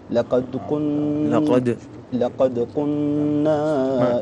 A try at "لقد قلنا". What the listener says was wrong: ما في اللام للطولة قل لقد قلنا